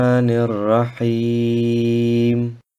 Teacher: Das Alif und das Lam im Wort Ar-Rahim werden nicht ausgesprochen. Das Nun vom Wort Ar-Rahman wird mit dem Ra des Wortes Ar-Rahim verschmolzen.